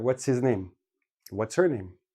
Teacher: HS are quite often dropped because H is a very soft sound it gets lost in the flow of the speech if you · we keep the TS and make it we drop the H and we put it all together